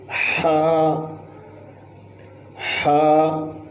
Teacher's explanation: اس کو حلق کے بالکل درمیان میں سے ادا کریں گے۔